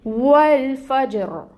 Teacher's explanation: جیم کو ہلائیں گے اور پھر را کے نیچے زیر کی حرکت ہے، لیکن ہم نے اس کو ساکن کر دینا ہے کیونکہ آیا مبارکہ جو ہے وہ مکمل ہو رہی ہے۔ جب را کو ہم ساکن کریں گے تو پھر را کو ہم پر پڑھیں گے۔ اب ہم نے را کو مفخم ادا کرنا ہے